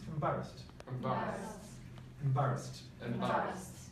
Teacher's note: so we have an unstressed first syllable